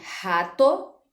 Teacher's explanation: Essa palavra ela é formada por 2 sílabas, então, se o tó é a sílaba átona, o rá só pode ser a sílaba tônica